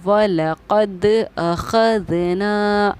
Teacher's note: अख़ज़ना के ना को मैंने खींचा है क्योंकि हुरूफ़ मद्दा के बाद हमज़ा है